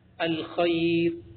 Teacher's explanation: جب یا ساکن آ گئی ہے نا تو را کو ہم باریک پڑھیں گے